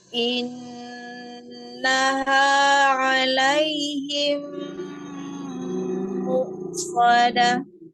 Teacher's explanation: Kalau mu-nya itu seperti ada tanda koma, hamzah. Karena hamzahnya siddah, tidak ada mengalir suara di huruf hamzah.